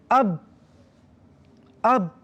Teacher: Syiddah yakni suara tertahan. Suara tertahan. Kita sebut ba, kalau matikan, letak dulu tepi qalqalahnya.